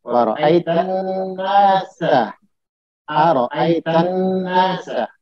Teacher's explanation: alif lamnya tidak dibaca tapi langsung ke huruf nun yang ditasdid. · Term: alif lam syamsiyah